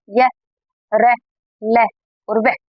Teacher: ना तो लंबी सांस ली जाती है ना लंबी सांस छोड़ी जाती है। बहुत कम अवरोध होता है सांस का। बहुत ऐसे डायरेक्ट बोले जा सकते हैं। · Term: अंतस्थ व्यंजन